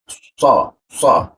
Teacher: Nah, posisinya di sini huruf pro mati, lalu masuk ke so. Huruf so, posisinya lidah ada di belakang gigi bagian bawah di lengkungan dia.